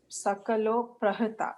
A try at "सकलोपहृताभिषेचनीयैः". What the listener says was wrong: Pahrta. It is the extra a there. just remember, Pahruta is one word. Pahruta is one word.